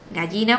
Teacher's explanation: El yeísmo sería la pronunciación de la doble L, de nuestra L, por la Y.